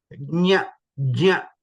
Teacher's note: Nya is j, nya, a, nya. So when we say nya, try to say ja also at the start a little bit.